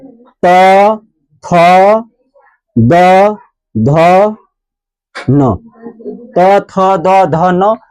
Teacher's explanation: इसका उच्चारण स्थान कहां है? दांत में। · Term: दंत्य